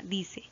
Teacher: por donde está la mayor fuerza de voz en la e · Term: acento prosódico